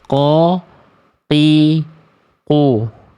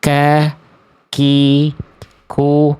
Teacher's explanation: Ini qaf lebih dalam, kaf lebih luar.